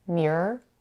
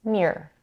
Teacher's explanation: many people however would say mirror dropping the middle R